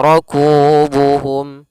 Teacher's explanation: pada lafal ku dibaca dengan dua harakat panjang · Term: Mad thaabii